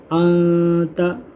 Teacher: نون ساکن کے بعد حروف اخفا میں سے تا آ رہا ہے، یہاں ہم اخفا کریں گے، گنہ کریں گے